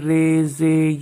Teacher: امالہ کا مطلب ہے زبر کو زیر کی طرف اور الف کو یا کی طرف مائل کر کے پڑھنا۔ امالہ کو اردو کے لفظ قطرے کی را کی طرح پڑھیں، یعنی ری نہیں بلکہ رے پڑھیں